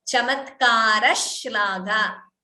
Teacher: Second sh is heard. The sh is doubling. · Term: dvitvam